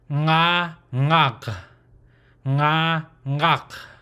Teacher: It's a guttural throat ending sound, open, but there's no jaw movement. Like I said, there's no equivalent English sound.